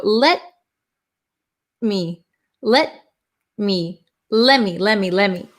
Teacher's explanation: we still put our tongue into position like we're going to do a t but we just keep it there. We don't let the tongue go down. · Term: silent t